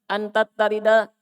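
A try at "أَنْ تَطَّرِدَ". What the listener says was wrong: To, no? Bukan ta.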